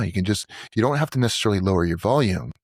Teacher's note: You can just you don't have to necessarily lower your volume, but you soften the edges of what of how you present the words. It's a little slower. It's a little bit more breathy, but not necessarily lower in volume.